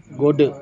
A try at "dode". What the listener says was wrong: don dode bukan go pakai bukan pakai j tapi pakai d dode do. tulisannya d h o d d d